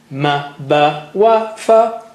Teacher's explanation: Ma, ba, wa, fa are from the lips.